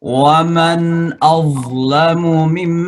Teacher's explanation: Mim sama suaranya karena nun ketemu dengan mim ya, namanya idgham bigunnah ya.